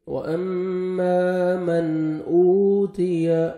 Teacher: واو مدہ 1 second, حمزہ کو کھینچنا ہے، تا کو باریک پڑھیں گے